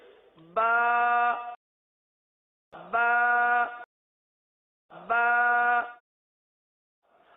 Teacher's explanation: اب اس کی مقدار بھی ہے نا، حرف کی مقدار بھی ہے۔ یہ جو ہم حرف ادا کر رہے ہیں ایک الف تک کھینچ کے پڑھ رہے ہیں۔